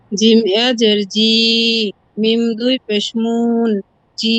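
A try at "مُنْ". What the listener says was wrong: মিম দুই পেশ মুন টান হবে না, মিম দুই পেশ মুন।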